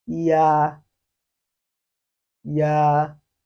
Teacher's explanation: e to get a clara pronunciation giving us yeah that is you will first of all read e out from your mouth and then ah follows immediately very quickly yeah yeah we also learned that when u forms a syllable